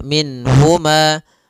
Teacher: Nun di sini harus jelas karena bertemu dengan huruf ha, maka tidak boleh ditahan. Misalnya ditambah dengan gunnah min huma, ini enggak boleh.